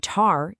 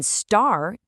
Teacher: In tar, you get this little puff of air t. But in star, that puff of air completely disappears. It's just a plain old t.